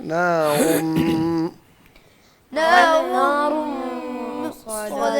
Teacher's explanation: را کو بھی پر کر کے پڑھیں